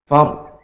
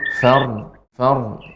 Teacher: Jadi ra ketika dia ditebalkan sukun, dia ada sifatnya bainiyah. Jadi tidak langsung berhenti far, namun far.